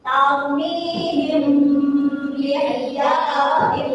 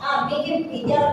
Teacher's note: Yaitu ikhfa syafawi yaitu apabila terdapat mim sukun bertemu dengan ba, cara membacanya yaitu dengan suara sama. Antara mim sukun dengan ba pada bibir kemudian ditahan